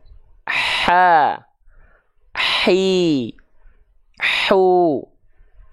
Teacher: mengalirkan nafas yang berbisik ha hi hu kedengaran ada nafas berbisiknya Ha dialirkan dulu berbisiknya baru keluarkan vokal a i u-nya